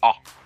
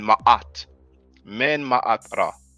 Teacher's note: That's the transliteration for the Ayin. Ayin is the glottal A sound.